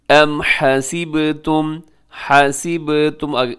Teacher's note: ام حسبتم، حسبتم آگے جو با ہے وہ قلقلہ ہوگا۔ حسبتم کے آخر میں جو میم ساکن ہے اس کے بعد بھی حمزہ ہے، وہاں بھی میم ساکن کا اظہار ہوگا۔